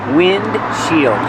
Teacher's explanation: But you don't really hear the D